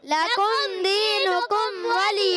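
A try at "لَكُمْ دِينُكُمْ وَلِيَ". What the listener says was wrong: اچھا لقم قاف موٹا نہیں، کاف باریک، لکم، لقم نہیں، لکم دینکم ولی۔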